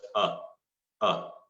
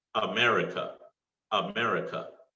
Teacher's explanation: the schwa sound guys is the most relaxed sound your mouth does not move much and it also your mouth doesn't open much